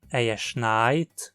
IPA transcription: ɛɐ ʃnaɪ̯t